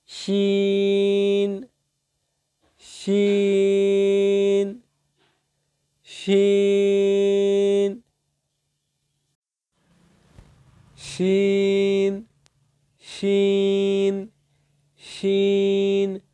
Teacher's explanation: সিনের পরে এবার রয়েছে শিন। জিহ্বার মধ্যভাগ তার উপরস্থ তালুর সঙ্গে লাগিয়ে উচ্চারিত হয়